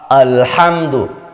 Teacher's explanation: Hamzah ini yang harusnya tipis malah dibaca tebal. Alhamdu, padahal harusnya a saja.